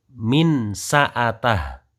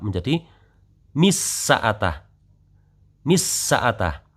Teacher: Nunnya hilang sama sekali baik zat maupun sifatnya. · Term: idgham